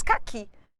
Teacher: Caqui, a sílaba mais forte ficou clara que é o I.